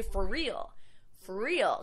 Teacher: And you could pronounce it for real, or because we have the R at the end of for and the R beginning the word real, we could combine them together and say for real.